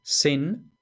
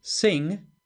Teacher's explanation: tenemos la palabra sin, que significa pecado, con la N alveolar, y sing, que significa cantar, con la N velarizada.